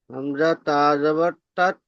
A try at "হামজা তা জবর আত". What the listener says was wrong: আত আত। তা হয়ে যাচ্ছে, হামজা তা যাবার তা নয়, হামজা তা যাবার আত।